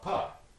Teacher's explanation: that voiced obstruent, voiced stop, b, the voiced labial stop, becomes a voiceless labial stop, pa. Right?